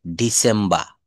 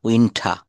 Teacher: শব্দের শেষে বা বাক্যের শেষে আর থাকলে ব্রিটিশরা কিন্তু আর এর উচ্চারণটা করে না